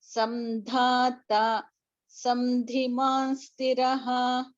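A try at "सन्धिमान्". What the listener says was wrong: Are you saying samdhiman or sandhiman? It is not samdhiman Bhagini, it is sandhiman.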